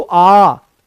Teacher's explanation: ह्रस्व स्वर से दो गुना समय यहां पर लग रहा है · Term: दीर्घ स्वर